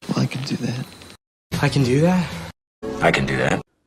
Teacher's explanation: In positive sentences, it is pronounced kin and is unstressed.